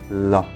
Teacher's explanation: is for example ma na and ma lateral the airflow is blocked in the center of the mouth and flows around the side of the tongue